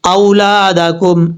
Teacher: حمزہ کے بعد جو واو ہے یہ واو لین ہے، واو مدہ نہیں ہے · اولادکم، اس طریقے سے، لام کے بعد الف مدہ ہے، لمبا کریں گے ایک الف کی مقدار